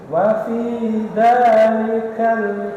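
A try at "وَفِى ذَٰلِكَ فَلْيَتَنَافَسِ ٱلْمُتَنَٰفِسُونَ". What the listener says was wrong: Oh, gak pakai kal. Ga.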